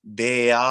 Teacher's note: the stress is on the ah sound.